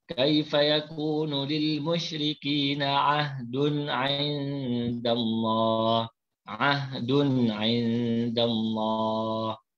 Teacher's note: Izhar halqi dibaca jelas tanpa dengung.